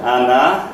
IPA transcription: ɑnɑ